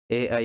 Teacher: ए आई का कंठ तालव्य, यानी कंठ और तालु से